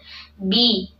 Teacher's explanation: Nah, bi di sini kasrah, sempurnakan menurunkan rahangnya bi. Kemudian huruf ba ini kuat ya, tidak alir nafas.